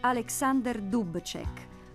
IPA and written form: ˈaleksander ˈdupt͡ʃek (Alexander Dubček)